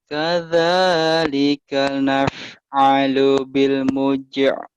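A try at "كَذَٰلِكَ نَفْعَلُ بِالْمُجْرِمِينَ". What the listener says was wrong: B-nya jangan buru-buru. Jangan. Kadzalika naf'alu bil mujrimin. Jangan buru-buru Bapak. Kenapa ada bil mujr? Kenapa ada ke tenggorokan? Biasa. Gitu aja biasa. Kadzalika naf'alu bil mujrimin.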